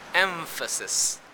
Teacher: the place of articulation of the nasal becomes labiodental just like the labiodental f sound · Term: labiodental nasal